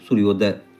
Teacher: उसी प्रकार से देखिए सूर्य जोड़ उदय बन गया सूर्योदय। सूर्य में अ और उदय में उ मिलके बन गया ओ। · सूर्य में अ और उदय में उ, ये मिल के बन गया ओ, सूर्योदय।